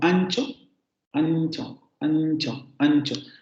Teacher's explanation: nasal palatalizada, perdón, que ocurre frente a consonantes palatales